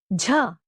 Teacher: Not used in English, its pronunciation can be described like the ja in the word jug, but a lot breathier.